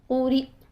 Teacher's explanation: تو جھٹکا دے کر آواز بند کرنے کا طریقہ میں نے آپ کو بتایا کہ آواز کو تھوڑا لاؤڈ کریں اور اس کے بعد جھٹکا دے کر بند کریں. ہلانا نہیں ہے آواز کو.